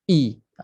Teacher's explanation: Suara itu daripada tertutup pita suara ke terbuka pita suara. I. Tu bunyi dia ketat.